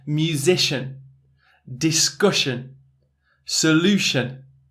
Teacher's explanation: we have some schwa sounds that are less emphasized with the sh